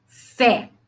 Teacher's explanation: Olha a força da palavra fé. Fé. O E é aberto.